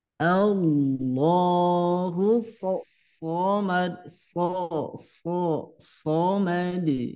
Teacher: Kalau so itu pangkal lidahnya diangkat. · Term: so itu tebal